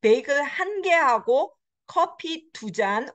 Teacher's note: 둘, it lost its final consonant.